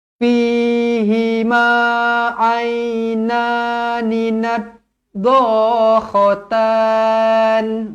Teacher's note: Jangan baca fihima ataupun fihima, salah Yang panjang, yang 2 harakat adalah fi ni. Hi ni tidak. Hi ni satu harakat sahaja. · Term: mad asli